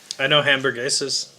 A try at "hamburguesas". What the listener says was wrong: Hamburguesas. You don't pronounce the H. It's not. Doesn't start with a J.